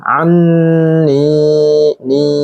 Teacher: ni-nya mad tabi'i karena kasroh bertemu dengan ya sukun, ya mati, panjangnya dua harokat lagi